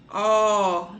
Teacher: No singular, do plural com metafonia, o O sempre virá fechado, de avô, né? E no plural ele vai vir aberto. Ó, naquele ó de avó, ok?